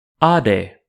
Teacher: it represents a long unrounded low back vowel like the a in father